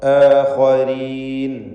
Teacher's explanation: റാഇന് കസ്റ, അതുകൊണ്ട് തർക്കീഖാണ്.